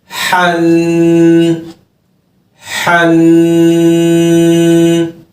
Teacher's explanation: حروف حلقی ہے، حلق کا درمیانہ حصہ ہے.